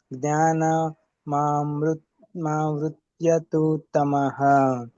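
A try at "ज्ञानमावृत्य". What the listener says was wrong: ಜ್ಞಾನ ಅಂತ ಅಲ್ಲಿ ಬ್ರೇಕ್ ಕೊಡಬೇಡಿ ಪ್ರಭುಜಿ ಜ್ಞಾನ ಮಾವೃತ್ಯ ಅಂತ ಕಂಟಿನ್ಯೂಸ್ ಆಗಿ ಹೇಳಿ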